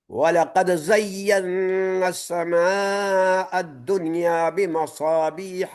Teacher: وَلَقَدْ دال میں قلقلہ ہے اور تیسرا درجہ ہے